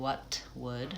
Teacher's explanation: stopping that T in what, I'm not releasing it, I'm saying what would, I'm saying what would, so I'm releasing the T into the W, what would they?